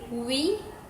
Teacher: the lips round while the back of the tongue raises slightly toward the soft pallet allowing for an easy flow of air